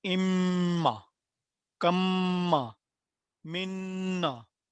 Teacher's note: नून मुशद्दद और मीम मुशद्दद पे आवाज़ ठहरते हुए लंबी होती है